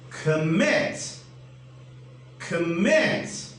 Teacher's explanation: i'm giving a stress on the second syllable